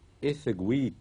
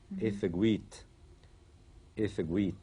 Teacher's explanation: le T de la deuxième personne n'est jamais spirantisé